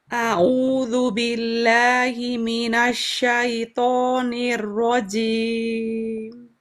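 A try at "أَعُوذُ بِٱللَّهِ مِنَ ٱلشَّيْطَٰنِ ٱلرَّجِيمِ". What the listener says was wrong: ya, nirrojim, tidak cim.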